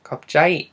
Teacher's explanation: You see the first symbol is k, and then you have the aw, the elongated aw, which is similar to that silent consonant we've been using, the same symbol as the silent consonant we've been using. And then you have b, which changes to a p when it's in final position. And then you have I, and which occurs before the j, and so you have jai.